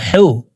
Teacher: হা হরফের উচ্চারণ হালকের মধ্যখান থেকে পড়বো, কারণ হার মখরাজ হালকের মধ্যখান থেকে হবে।